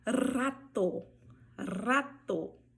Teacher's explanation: a letra R, ela vai vibrar bastante quando estiver no início da palavra.